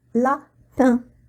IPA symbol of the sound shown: ɛ̃